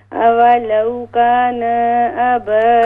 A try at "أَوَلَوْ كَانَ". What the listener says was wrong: كَانَ نُون زَبَر نَ. أَوَلَوْ كَانَ نُون کو لمبا نہ کریں. نُون زَبَر نَ.